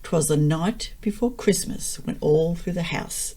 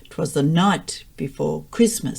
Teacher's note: the pattern is unstressed unstressed stressed unstressed unstressed stressed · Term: meter